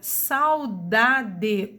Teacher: Na palavra saudade, o A é a minha vogal, o U é a minha semivogal e tem o som mais fraco.